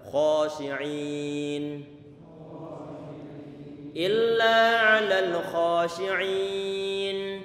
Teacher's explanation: Kha-nya tebal karena tadi itu huruf kha dia termasuk huruf isti'la yang terkumpul dalam lafaz khussa dhatin kil tadi itu. · Artinya tafasyi, angin itu nyebar ke mulut di saat mengucapkan huruf shin ini.